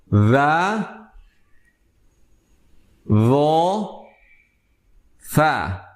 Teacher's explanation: Ketiga huruf ketiga huruf tersebut ditempelkan di punggung lidah. Punggung lidah kita ditempelkan ke ujung gigi seri atas. Namun dengan sifat berbeda, artinya bunyinya pun berbeda.